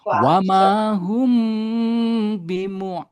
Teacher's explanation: Bunyi mim mati diikhfahkan ke dalam ba